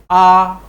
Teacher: आ, जिह्वा एकदम नीचे, मुख पूरा खुला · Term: विवृत स्वर